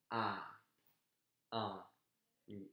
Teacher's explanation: It's got to be nasal when you say the A. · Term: nasal sound